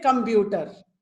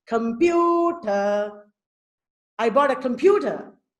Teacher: So pew has a higher pitch. It is said more clearly. The stressed syllable is usually said more clearly.